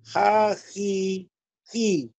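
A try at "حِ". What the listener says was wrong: Masih ada serak-serak dari kayak ingin mengeluarkan huruf ho enggak, Pak? Hi.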